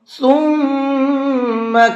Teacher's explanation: ثم کے میم کے اندر غنہ کر کے پڑھیں گے